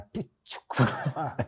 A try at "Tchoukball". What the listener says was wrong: No, the T is silent.